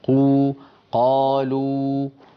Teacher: قلنا بأن الألف تخرج باهتزاز الوترين الصوتيين في الحنجرة، ويكون الفم مفتوحا واللسان في وضع الراحة. الواو كما تكلمنا عنها قبل الفاصل قلنا بأنها تخرج بانضمام الشفتين إلى الأمام، هكذا مثلا قو، قالوا، لا بد من انضمام الشفتين إلى الأمام، ويصاحب ذلك ارتفاع لأقصى اللسان قالوا لابد من ارتفاع أقصى اللسان، وإلا لا تخرج الواو بصوتها العربي المعروف.